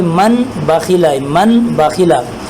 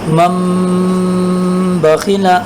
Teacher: نون کو سائلنٹ کریں گے، نون کی آواز بالکل نہیں آئے گی ، شروع والے میم کو باو کے ساتھ ملا کر پڑھیں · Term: اقلاب